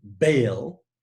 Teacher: the first type of consonant the b in bail is a stop or a plosive consonant